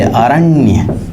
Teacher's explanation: कभी कभी ह्रस्व स्वर हो तो वह भी, जैसे देखिए अरण्य, कभी कभी ह्रस्व स्वर हो और उसके बाद देखा जाए यदि बलाघात पड़े, अरण्य बोल के देखिए, र पे बल पड़ रहा है